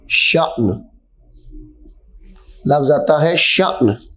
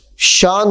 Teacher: حمزہ ساکنہ کو ہمیشہ جھٹکا دے کر پڑھنا ہے